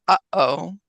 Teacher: that little break in the middle of the two syllables